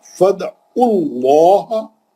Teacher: لام جلالہ سے پہلے عین پہ پیش ہے، موٹا پڑھیں گے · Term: لام جلالہ موٹا